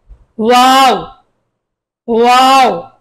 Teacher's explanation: দুই ঠোঁটের ফাঁক থেকে আদায় হবে।